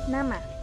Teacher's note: ujung lidah menyentuh kaki gigi atas sebagai titik artikulasi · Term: bunyi apiko-alveolar